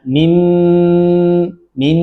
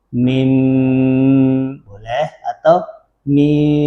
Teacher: Jadi jangan mim mim jangan ditekan begitu. Cukup menempelkan bibir dengan lembut jangan terlalu rapat agar suara tidak terdengar seperti mim yang ditasydid.